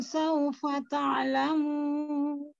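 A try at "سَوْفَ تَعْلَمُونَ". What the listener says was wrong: Ya, disempurnakan lagi mim tasdidnya. Ya, sekali lagi. Mim tasdidnya sempurna ya. Mim bertasdid itu gunnahnya paling tinggi ya, sempurna.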